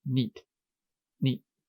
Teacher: That is called allophonic clipping, and it happens every time any word, single syllable word, ends in an unvoiced consonant. We have the T here versus the D.